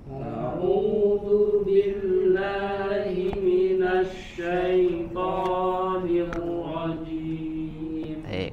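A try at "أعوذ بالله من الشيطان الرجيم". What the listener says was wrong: Dibuka lagi mulutnya, sempurnakan itmamul harakat, rahangnya digerakkan. A'udzu billahi minasy syaithanir rajim.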